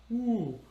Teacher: You create the vowel a little further back. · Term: back vowels